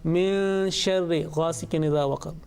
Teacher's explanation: sustained, concealed and prolonged nasal sound